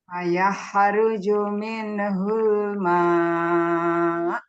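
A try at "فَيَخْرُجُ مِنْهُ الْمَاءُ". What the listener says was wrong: Minnya jangan mantul.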